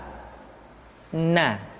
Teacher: Caranya menyentuhkan ujung lidah kita di antara posisi ro dengan la. Na. Perhatikan latihan berikut ini. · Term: Huruf na